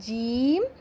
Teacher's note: زبان کا جو درمیانی حصہ ہے وہ تالو کے درمیان سے لگے